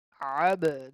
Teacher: The ba is a qalqala letter, so we need to bounce back.